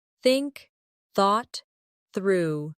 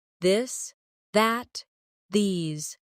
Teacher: Put your tongue between your teeth and push air out for think. For this, your tongue touches the same position, but with your voice turned on.